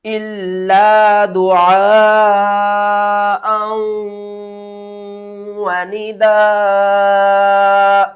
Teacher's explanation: حمزہ واو دو زبر ام، اور آواز جو آئے گی وہ گھننے کے ساتھ آئے گی، یعنی ہم آواز کو چھپا کر پڑھیں گے · اللہ دال پیش دو، عین الف مد زبر آ، بڑی مد ہے، کھینچ کر پڑھیں گے